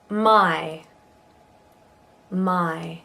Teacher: We go from ah to e in this one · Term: Diphthong I